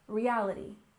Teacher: And next we have reality TV. We stress the second syllable in reality